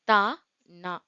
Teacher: மேற்பல்லின் அடிப்பகுதியை நாவின் நுனி பறந்து அதாவது நல்ல பரவுற மாதிரி